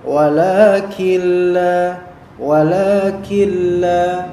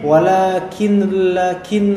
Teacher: namun tidak dibaca W langsung Killa Killa langsung Killa Killa jadi langsung melebur ke lam diidamkan ke lam semuanya kemudian ditasdidkan lam itu tapi tidak ada gunah tidak ada dengungan di sini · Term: Idgham, idgham